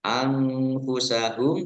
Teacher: nun sukun bertemu dengan huruf fa, bacaan ikhfa dibaca samar-samar